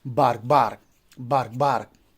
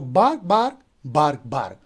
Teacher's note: So here we have 2 feet and in each foot we have 2 syllables and both are stressed. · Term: spondee